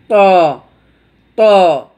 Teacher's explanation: সানায়ে উলিয়ার দাঁতের গোড়ার সাথে লেগে উচ্চারণ হবে শক্তভাবে